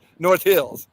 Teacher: Accent on the Hills